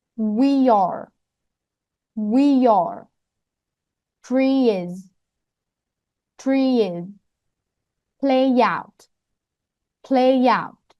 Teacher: linking a vowel to a vowel. First, adding y sound.